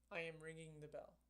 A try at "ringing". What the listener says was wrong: No, you don't really do that. It says here that some Indian speakers add the G sound after it occurs in the middle of a word. So you would say ringing. You had like a little thing in there, but I don't think it was really that.